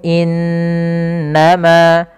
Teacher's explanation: pada lafal innama di sini ada bacaan gunnah berupa nun yang berharokat tasydid